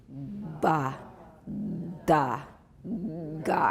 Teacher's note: And you got that rumble in your throat. That's the voicing. And so make sure you're not saying mba, nda, nga. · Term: long, fully voiced stops